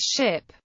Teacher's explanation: Voiceless palatal alveolar sibilant, as in English ship.